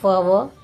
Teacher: जिनके उच्चारण में लिप और टीथ दोनों की सहायता ली जाती है, उन्हें लेबियोडेंटल कहते हैं, जैसे फ व।